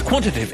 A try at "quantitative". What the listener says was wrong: It's quantitative. You missed out a tut then there.